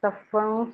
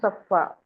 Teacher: زبر کی تنوین کو ایک الف سے بدل کے ایک حرکتین مقدار، ایک الف کے برابر، حرف مدہ کی مقدار کے برابر پڑھیں گے. صفن صفا. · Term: وقف بالابدال